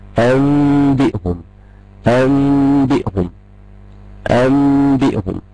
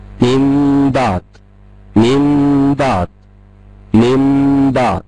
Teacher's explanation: طب الميم دي هنطقها صريحة؟ لا، ميم بنطقها ميم مخفية، ميم مخفية. طب وأثناء الإخفاء بأبدأ أؤدي الغنة بمقدار حركتين. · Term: الإقلاب